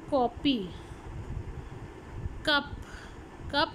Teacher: Back of the tongue is raise towards the वीलम, तो ये आपकी क साउंड है।